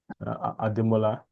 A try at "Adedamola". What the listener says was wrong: it's not Ademola.